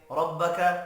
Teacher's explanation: را زبر کی وجہ سے پر پڑھا جائے گا